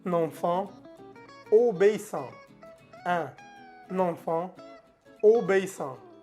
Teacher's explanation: Obéissant. No se pronuncia la T.